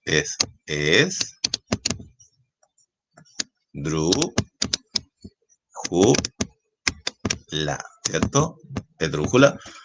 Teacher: la fuerza de voz, la sílaba tónica, está en la antepenúltima, acuérdate que esta sería última, penúltima, antepenúltima.